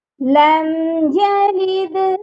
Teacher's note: اللہ الصمد لم یلد، یہاں پر جو لم کا میم ہے اس پر کبھی بھی غنہ نہیں کرنا